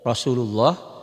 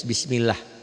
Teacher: Lafaz Allah itu ada yang dibaca tebal, O Rasulullah. Ada yang dibaca tipis, bismillah.